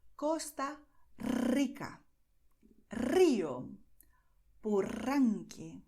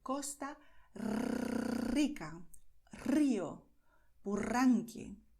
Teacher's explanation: your tongue is going to vibrate because you're going to expel the air. And with the strength of the air that it's being expelled, then your tongue will, well, make this vibration, okay?